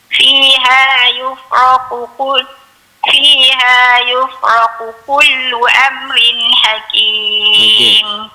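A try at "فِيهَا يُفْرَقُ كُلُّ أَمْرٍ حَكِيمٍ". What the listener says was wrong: Fiha yufraqu, kena tebal dulu. Fiha yufraqu kull, baru kita nipihkan. Fiha yufraqu kullu Am tu satu lagi kita kena jelaskan dia punya mim tersebut. Kalau kita sebut amrin, itu seolah-olah macam kita nak dengung dekat situ.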